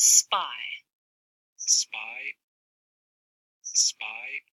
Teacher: turbulence at the beginning that's for the fricative ass and then there's this silence where the lips are closed for the P